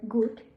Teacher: Voicing voice. Place of articulation velar. And manner of articulation plosive.